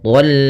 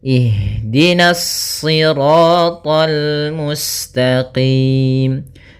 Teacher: karena kita bertemu dengan huruf lam maka dia lamnya tipis. Jangan ikut tebal.